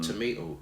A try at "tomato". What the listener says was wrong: And it's not only tomato that British say, but the second T is not a D, so it's not tomato, but tomato.